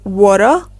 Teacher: in American English, the T sound is a bit softer. It will often be heard as a soft D sound, while in British English, the T is clearly pronounced.